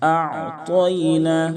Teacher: تو کو مکمل طور پر پر کریں گے، یعنی موٹا کر کے ادا کریں تاکہ تا سے نہ بدلے، کیونکہ تو حروف مستعلیہ کے 7 حرفوں میں سے ہے۔